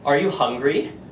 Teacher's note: at the end of it, my voice goes up